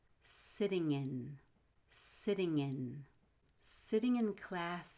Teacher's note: connect so and i so i'm so i'm sitting in class you have an ng linking to a vowel · You have an NG linking to a vowel, so it'll sound like ngin.